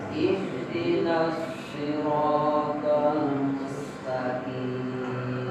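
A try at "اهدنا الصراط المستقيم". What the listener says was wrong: Nah, mustaqim masih kaf. Mustaqiti aqiti. Sekali lagi.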